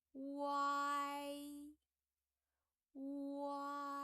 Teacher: your mouth shape and your tongue position is sliding from W to A and to E